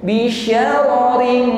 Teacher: ikhfa yang bunyi dengungnya itu jauh lebih dominan ya lebih tampak jelas daripada bunyi samarnya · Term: ikhfa tingkatan Adna